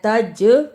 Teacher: جیم جزم کی صورت میں حرف قلقلہ ہے، یعنی اس لفظ کو ہلا کر پڑھنا ہے